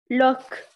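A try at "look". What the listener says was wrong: لوك قصير، اسمه قصير.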